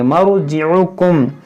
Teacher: مر یا را ساکن سے پہلے زبر ہے، اس کو موٹا کریں گے